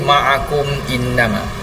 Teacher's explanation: Mim mati bertemu hamzah, tidak ada apa-apa panjang, dengung ataupun kemasukan. Bacaannya jelas. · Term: izhar syafawi